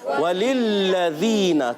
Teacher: تو پہلا لام جلدی میں اور دوسرا جو ہے مشدد ہونے کی وجہ سے اب اس کو ذرا رک کر پڑھیں گے